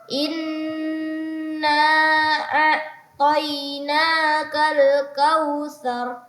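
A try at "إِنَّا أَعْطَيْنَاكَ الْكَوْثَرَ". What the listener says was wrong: Ya, jangan ragu, na-nya dipanjangkan lagi. Inna a'tainaka.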